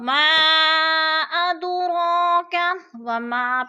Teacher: اب ما ادراک وما پہ جو ہے مد منفصل ہے کیونکہ حروف مدہ کے بعد حمزہ دوسرے کلمے میں ہے تو مد منفصل 4 الفی مد ہے، 4 الف کے برابر ہم نے اس کو لمبا کر کے پڑھنا ہے. اب اد پہ جو ہے قلقلہ ہو رہا ہے، دال ساکن ہے اور حروف قلقلہ میں سے ہے تو ادھر قلقلہ ہو رہا ہے یعنی ہم نے اس کو تھوڑا سا ہلا کر پڑھنا ہے.